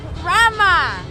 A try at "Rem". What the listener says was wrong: Rem! No A at the end!